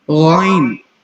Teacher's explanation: یہ بھی بالکل سیم اسی جگہ سے ادا ہوگا جہاں سے خا ادا کیا تھا, یعنی حلق کا وہ حصہ جو منہ کی طرف ہے ہمارے · غائن جو ہے وہ موٹے حروف میں آتا ہے, غائن کو ہم پر کر کے پڑھیں گے